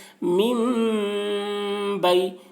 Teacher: یا ساکن سے پہلے زبر ہے، یا لین ہوا اس لیے یا لین کو نرم آواز کے ساتھ جلد پڑھیں